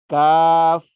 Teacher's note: کاف، یہ باریک آواز میں پڑھا جائے گا. زبان کی جڑ اور تالو کا سخت حصہ ملنے سے کاف ادا ہوتا ہے